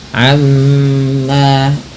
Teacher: Amma ghunah tahan bunyi mimnya sebagaimana nun berharakat tasydid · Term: gunnah